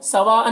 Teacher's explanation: सवाअन में जो मद है मद्दे मुत्तसिल है, इसे 3-4 अलिफ के बराबर खींच कर पढ़ेंगे। और अन की तनवीन में इख्फा होगा, यहाँ पर नून के तनवीन की आवाज़ को नाक में छुपा कर पढ़ेंगे।